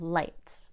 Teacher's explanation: With light, the tip of my tongue touches the tooth ridge at the top of my mouth. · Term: clear L